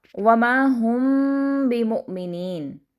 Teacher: جو میم ساکن کے بعد با آ گیا ہے وہاں پر ہم نے تھوڑی دیر کے لیے سٹے کیا ہے، ہم تھوڑا رکے ہیں اور ہم نے اخفا کیا ہے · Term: اخفا شفوی